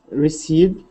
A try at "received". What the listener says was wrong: Try doing it again, but with a even better R. Received.